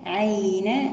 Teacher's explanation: الياء لينة لأنها ساكنة قبلها مفتوح